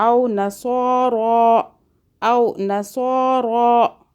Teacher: صاد کو موٹا، را کو موٹا، ایک ایک الف کے برابر کھینچا